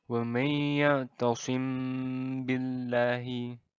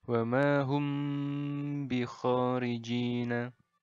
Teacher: Jadi bagian mim bertemu ba-nya ini ditahan dulu, didengungkan sepanjang 2 harokat. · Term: ikhfa syafawi